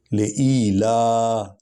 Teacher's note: لام کو لمبا کریں گے کیونکہ اس پر کھڑا الف ہے، یعنی کھڑا زبر ہے